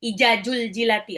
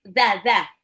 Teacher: ujung lidah seperti mau digigit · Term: zal